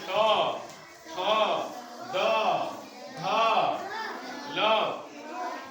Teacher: ये सभी के सभी बच्चों दांत से उच्चारित होते हैं। दांत से उच्चारित होते हैं, यानी जब हम बोलेंगे तो हमारी जीवा जाकर के दांत पे क्या हो जाएगी? लड़ जाएगी। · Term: दंत्य